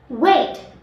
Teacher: And the phonetic symbol is W. Voice, bilabial, glide.